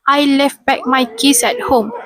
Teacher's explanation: In this sentence, illusion may occur in the word left where the T is dropped resulting in left. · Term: elusion